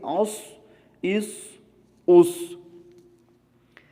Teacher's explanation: صاد، سین کے انداز میں باریک نہیں پڑھا جائے گا